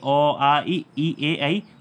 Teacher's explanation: उच्चारण के समय पर आपके होंठ या जो आपके होंठ हैं वह गोलाकार नहीं होते हैं